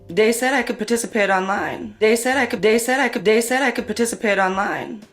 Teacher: TH stopping, so that might be using something like a D sound for where you see a written TH, so dat for that.